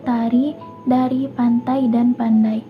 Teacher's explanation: Lalu yang ketiga itu ada konsonan hambat dental, itu mencakup huruf T dan D